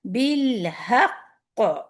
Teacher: بالحق, اگر آپ یہاں پہ رکیں گے, قاف پہ شد ہے, تو یہ جو قلقلہ ہے بہت ہیوی قلقلہ ہوتا ہے. قلقلہ کبرا ہے, اصغر, اصغرا, اور اگر کبرا ہے تو پھر یہ کبرا, یعنی سب سے ہائیسٹ لیول کا.